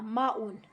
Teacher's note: ماں کو ہمیں کھینچنا ہے کیونکہ الف سے پہلے زبر ہے تو یہ حروف مد ہے۔